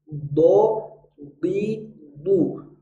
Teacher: tidak ada padanannya pada huruf alfabet maka kita harus melatih pengucapannya huruf Dod ini unik karena dia punya sifat rakhwah mengalirnya bunyi huruf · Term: rokhawah